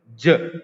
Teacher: When you pronounce j, there is vibration. Okay, so it's a noised consonant, noised, and palato alveolar. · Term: voiced